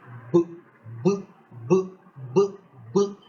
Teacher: and produce the sound BBB you will notice that the sound produced a kind of vibration on your throat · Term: voiced